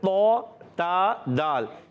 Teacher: अच्छा, तो का मखरज तो ता दाल, ये 3 हुरूफ एक ही जगह से अदा होते हैं। इनका मखरज है ज़ुबान का सिरा और ऊपर के दांतों की जड़ों से ये हुरूफ अदा होते हैं